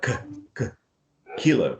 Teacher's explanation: This is a velar sound, something that you have to feel in the soft part of your palate. It's like that's where the point of articulation. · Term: k sound